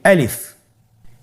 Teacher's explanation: আলিফ হরফটি মাখরাজ হলো আপনার মুখের শূন্যস্থান থেকে। গলা এবং মুখের শূন্যস্থান হতে আলিফ হরফটি উচ্চারিত হয়। আমরা সবাই বলি আলিফ।